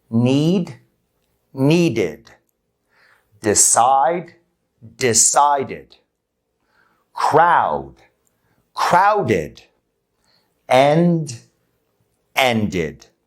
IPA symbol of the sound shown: ɪd